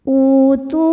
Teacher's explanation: wau sukun sebelumnya Hamzah berharakat damah hamzahnya dalam bentuk Alif ya maka u panjang nya dua harakat utu Kalau berhenti di tu hukumnya Mad thi'i karena ada wau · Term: mad badal